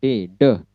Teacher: Ujung lidah bertemu dengan langit-langit di atas gigi atas. Ini gigi atas, di atasnya gigi atas ada langit-langit.